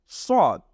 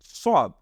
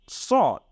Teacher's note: সিন হলো চিকুন আর সদ হলো মোটা